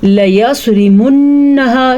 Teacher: صاد کو پر پڑھیں گے، را کو باریک پڑھیں گے کیونکہ را کے نیچے زیر ہے. نون کے غنے کو ادا کرنے کے لیے منہا ایسے پڑھنا ضروری ہے.